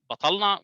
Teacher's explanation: you hear backing of all consonants in the uninflicted word domain. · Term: emphasis spread